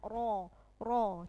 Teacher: bunyinya ro itu tebal memenuhi seluruh rongga mulut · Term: Ro tafkhim